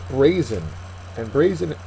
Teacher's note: the first syllable is accented